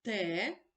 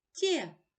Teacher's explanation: перед е звук т твердий перед є звук ть м'який